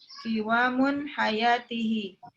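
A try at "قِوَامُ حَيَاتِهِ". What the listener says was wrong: Nggak pakai tanwin, Bu, qiwamu.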